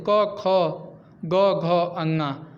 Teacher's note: क वर्ग का जो भी व्यंजन है उसका जो उच्चारण स्थान है वो कंठ है।